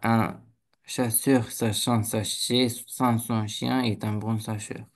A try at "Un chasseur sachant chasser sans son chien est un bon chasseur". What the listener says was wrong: Presque. Il y a des petits che en moins et en trop.